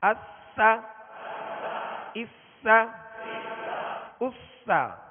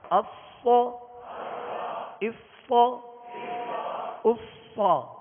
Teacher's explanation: سین کو باریک پڑھیں گے اور صاد کو پر کریں گے, یہ ان کے اندر فرق ہے